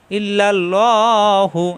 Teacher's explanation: আর আল্লাহ শব্দ ডানে জবর আসার কারণে আল্লাহ হবে মোটা হবে